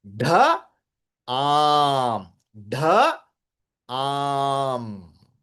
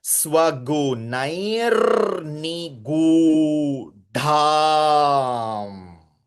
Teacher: Because dha is a Mahaprana Shabdam. Along with Aki Matra, elongation is also there.